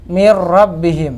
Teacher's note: nun sukun bertemu huruf ra masuknya sempurna ya zat dan sifat-nya huruf nun hilang secara sempurna Tidak disisakan satu pun yang Oh ya masuk mirrobbihim Oh ya